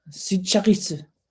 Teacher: emphasizes the second syllable